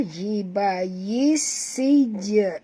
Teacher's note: Masukkan bunyi ya terus ke dalam sin disertai dengan jud kerana sin ada 2. Dan jim ini mati, maka kita kena lantunkan dia dengan lantunan kecil. Jadi bunyi dia hiba yis sij.